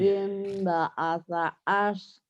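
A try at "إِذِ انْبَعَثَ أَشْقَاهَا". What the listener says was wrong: shinnya gede. Idzin ba'atsa sanya cedal. Idzin ba'atsa ashqaha. Ash idzin ba'asa ashqaha. Ash. Idzin ba'asa ashqaha.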